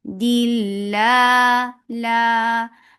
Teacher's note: Ah dil for kasra give e sound and attach with lafz jalala. Lafz jalala will be light because there is kasra before it. Dilla la and lafz jalala is always long, so make it two counts long.